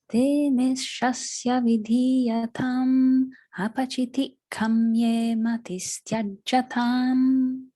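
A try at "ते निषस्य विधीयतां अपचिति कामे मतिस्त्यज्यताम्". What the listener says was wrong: Make a note there on the kamye. Make sure that's long there.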